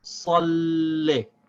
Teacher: we have to connect the lam with the sad and then pronounce the kasra for the lam without stopping the sound of the lam. So we say salli.